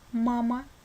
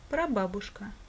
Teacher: буква а произносится как а под ударением мама или перед ударным слогом прабабушка